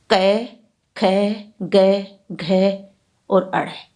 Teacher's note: कै, ख, ग, घ और अड़ हिंदी में कोमल तालव्य व्यंजन है, क्योंकि इनका उच्चारण स्थान कोमल तालु, कंठ के ऊपर का स्थान से होता है। संस्कृत में ये कंठे वर्ण थे, किंतु पिछले 2500 वर्षों से इनका उच्चारण स्थान कंठ से थोड़ा ऊपर कोमल तालु से हो गया है।